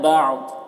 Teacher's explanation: یہاں پر وقف کریں گے تو تنوین جو ہے وہ سکون سے بدل جائے گا اور ضاد کو پر پڑھیں گے